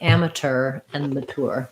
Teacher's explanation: in british english um they don't use the cher the ch sound they say more like amateur and mature